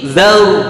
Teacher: Zar ada 3 getaran, merusak sifat huruf ra. Zar itu yang betul adalah zaur, cepat ditarik.